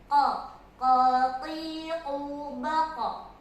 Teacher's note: Ya, yang pertama itu ada pangkal lidah, ya, pangkal lidah menuju langit-langit itu ada huruf qaf, ya. Pangkal lidah menuju langit-langit, ya, mengenai langit-langit itu ada huruf qaf